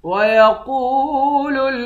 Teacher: قاف کو واو کے ساتھ ملا کر 1 الف کے مقدار کھینچ کر پڑھیں گے، قاف کو موٹا بھی پڑھیں گے